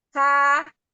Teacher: Jadi setelah qaf, pangkal lidahnya atas, turun sedikit lebih bawah, jadi ketemu makhraj kaf ya, kaf ya. Huruf kaf lebih bawah pangkal lidahnya daripada huruf qaf. Huruf qaf itu pangkal lidah atas ya, tapi kalau kaf pangkal lidahnya turun sedikit ya.